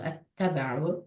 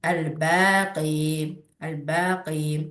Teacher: Ləm hərfi məxrəci dilin ön yollarıdır. Ləmdən sonra gələn hərf ləmin məxrəci yaxın məxrəcə yerləşərsə, bu zaman ləm oxunmayacaq. Ondan sonra gələn hərf şəddəli oxunacaqdır. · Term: idğam şəmsiyyə